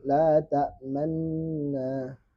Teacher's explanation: Ismam isyarat bibir dimonyongkan sebagai pengganti damah.